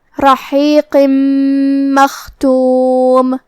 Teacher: پھر جو کہ حرف المیم ہے کلمت مختوم میں، اور میم حروف الادغام بے غنہ میں سے ہے، تو ہم یہ تنوین کو میم میں ملا کے غنہ اور تشدید کے ساتھ یہ حکم کو ادا کریں گے